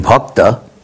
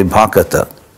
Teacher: sometimes in Bengali they insert an extra vowel